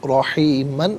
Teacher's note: را پر زبر ہے، را کو پر کر کے پڑھیں گے